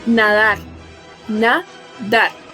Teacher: Su sílaba tónica está en la última sílaba.